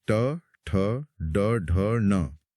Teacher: फिर मुंह की छत के और आगे कठोर हिस्से को मूर्धा कहते हैं। यहां जीभ मुड़कर टकराती है। यह है तीसरी लाइन ट वर्ग।